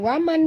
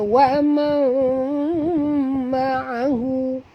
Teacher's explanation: Okay, nun mati bertemu dengan mim, wajib dengung. Masukkan bunyi nun ke dalam mim disertai dengung. Ni namanya idgham ma'al gunah ya.